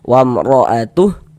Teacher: Huruf roh memiliki harokat fathah, tanda baca fathah ya, baris miring di atas huruf ini harokat fathah atau baris fathah. Maka huruf roh kita baca tabkhim, kita baca tebal. Nah, sehingga dengan mengangkat atau menaikkan pangkal lidah kita ketika kita mengucapkannya.